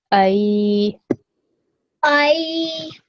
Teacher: you need to make it long, but I need to hear that soft and easy sound of the ya. So I. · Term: ya leen